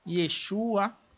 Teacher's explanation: Quando se agrega outros elementos a esta raiz, por exemplo, sufixo pronominal, é necessário que haja uma volatilização da vogal do início, A, que é longa, para uma vogal breve, tornando-se assim a pronúncia de E